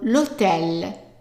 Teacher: the emphasis is at the end of the word, and that's why you hear the tel louder and a little bit longer than the lo